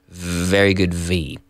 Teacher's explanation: like an F it has nothing to do with a B it is more to do with an F and activating the vocal cords